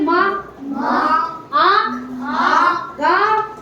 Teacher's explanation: और वैसे अनुस्वार वाले में अभी गला, अपने कंठ, नाक और मुंह दोनों से बोला जाता है। नाक और मुंह दोनों से हवा निकलती है ना इनकी।